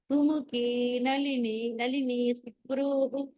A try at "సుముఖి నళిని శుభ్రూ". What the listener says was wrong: కొంచెం నళిని దగ్గర ఫాస్ట్ అయిపోతున్నారు, కొంచెం స్లో చేయండి.